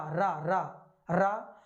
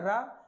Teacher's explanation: जब हम रा का उच्चारण करते हैं तो जीभ मुख के मध्य तेजी से लड़खड़ाते हुए या कंपित होती है। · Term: लुंठित व्यंजन